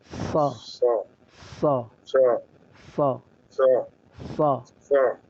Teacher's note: মাখরাজ হচ্ছে জিহ্বার আগা সামনের নিচের দুই দাঁতের আগার দিকে